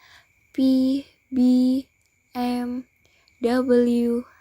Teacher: bilabial consonants, in which the obstruction is formed by the lower and upper lips.